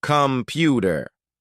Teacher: An unclear speaker will say computer, giving equal weight to every part. A clear speaker makes the first and last syllables lazy. They say, computer. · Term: schwa